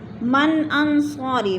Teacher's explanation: نون ساکن کے بعد حروف حلقی میں سے حمزہ آ گیا ہے تو ادھر اظہار ہو رہا ہے، غنہ نہیں کریں گے